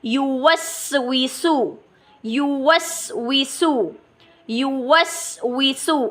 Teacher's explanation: جاری ہے اور نرمی سے ادا ہو رہی ہے. اور ان حروف میں یہ جو سین ہے اس میں بعض سیٹی بھی پائی جاتی ہے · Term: سیٹی والے حروف